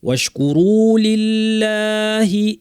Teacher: আল্লাহ লামটা পাতলা পূর্বে জের